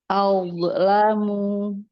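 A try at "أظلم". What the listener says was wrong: Masih mantul. Azlamu. Azlamu. Ya, kalau sudah sensitif dengan hukum pantul apa enggak, nanti kita bisa memperbaikinya.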